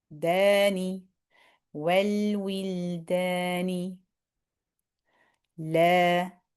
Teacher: The mouth stretches open, dani, will, dani, la. So the da and the la, exact same length